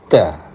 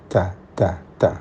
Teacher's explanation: ta itu kalau dalam keadaan hidup maka unsur menahannya suara itu lebih dominan daripada mengalirnya udara atau angin. Jadi suara ditahan, baru angin dilepas. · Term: hamas